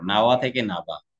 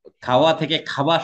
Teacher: ওয়াকে ওখানে একটা ব শোনা যায়, তাই এটার নাম হচ্ছে বশ্রুতি।